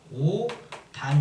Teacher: 자, 모음의 실질 형태소 적용이 되는데 예를 들면 옷 플러스 안 이렇게 되어 있으면 이걸 오산으로 발음하지 않고 시옷이 디귿으로 바뀌어서 오단 이렇게 발음이 됩니다